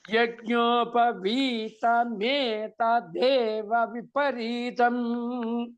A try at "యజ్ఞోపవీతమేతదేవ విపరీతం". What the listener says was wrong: చెప్పకండి, అన్ని పైకి వెళ్ళిపోతున్నాయి అక్షరాలు.